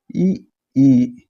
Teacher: உதடை வந்து நீங்கள் விரிக்கும்போது உருவாகிற எழுத்து